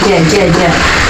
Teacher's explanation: pada saat kita mengucapkan huruf Jim itu ee apa Tengah lidah kita kita pasti akan eh hampir bertemu dengan langit-langit